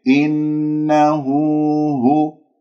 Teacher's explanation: الهاء هنا كما تلاحظون لدينا مد الصلة صغرى بمقدار حركتين